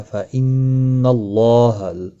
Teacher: گنہ کے ساتھ پڑھیں گے، ان نون مشدد پر گنہ ہوگا، اللہ کا لام زبر کی وجہ سے پر پڑھا جائے گا ، فإن اللہ، اللہ کے لام